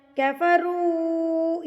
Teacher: یہ چھوٹی مد ہے، مد منفصل ہے، تو اس کو آپ نے 3 حرکات کے برابر کھینچ کے پڑھنا ہے